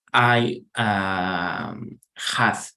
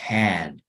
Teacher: Hath no sería así, sino es más como una combinación entre la E y la A.